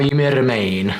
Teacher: He's got a little bit of the rolled R